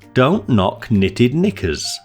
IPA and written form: dəʊnt nɒk ˈnɪ.tɪd ˈnɪkəz (Don't knock knitted knickers)